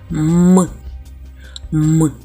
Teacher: в нас губки закриті коли ми вимовляємо цей звук і він не співається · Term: приголосний